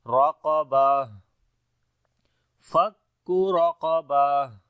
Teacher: یہ تا ہا میں بدل جائے گی، کنورٹ ہو جائے گی، تو ہا پڑھیں گے یہاں پر ہمس کے ساتھ · پڑھیں گے، را اور قاف دونوں کو موٹا پڑھیں گے، اور جب رکیں گے تا کے اوپر تو تا کے نیچے 2 زیر ختم ہو جائیں گی اور یہ تا ہا میں بدل جائے گی